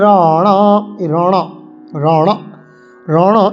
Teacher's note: যেমন মূর্ধন্য র, জীবকে উল্টো করে উচ্চারণ করব